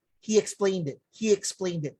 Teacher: Intrusion with the Y sound, it happens when the long E sound, long E sound is followed by another vowel sound.